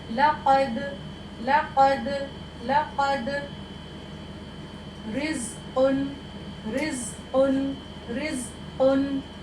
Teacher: ठीक है, यहाँ पर ये हमारी सॉफ्ट प्लेट है, ये हमारा जो कौवा है उसके करीब ये हमारी ज़बान की जड़ जो है ये हमारी लगेगी। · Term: क़ाफ